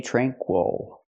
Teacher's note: Again, the stress is on the first syllable.